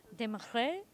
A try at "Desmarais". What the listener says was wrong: It's just the R's. We pronounce our R's differently.